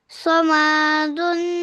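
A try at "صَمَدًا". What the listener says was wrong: खींचना नहीं है ना इसको, फौरन पढ़ना है। दा क्यों गोल, ये जो दो जबर के अलावा जो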